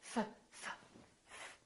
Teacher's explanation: There's no vibration in my vocal cords, so the F is actually a voiceless sound.